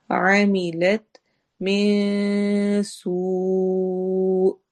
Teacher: آخر میں حمزہ ہے جھٹکا آئے گا